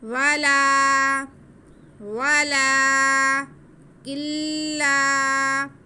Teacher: واو کے بعد لام پہ کھڑا زبر ہے، اس لیے ہم اسے ایک الف کے برابر کھینچیں گے